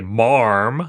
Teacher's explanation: which some people say marm again kind of adding an R for no clear reason